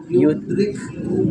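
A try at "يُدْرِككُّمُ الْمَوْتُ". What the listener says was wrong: Enggak, langsung masuk di ka. Jadi seakan-akan tidak ada ka-nya. Dia langsung bertasid. Yudrikku. Tidak perlu yudrik. Langsung di huruf ka beri.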